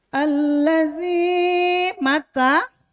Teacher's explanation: Kalau zai itu lebih tajam, kalau za tipis di ujung lidah